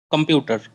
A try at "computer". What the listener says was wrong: open the jaw. Computer. Computer.